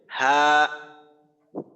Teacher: হাকে কিন্তু একালিক টানতে হবে